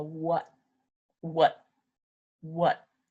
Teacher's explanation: I just kind of Stop The Sound by putting my tongue behind my teeth